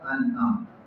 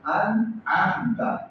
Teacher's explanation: انعمت گلے کے سینٹر سے عین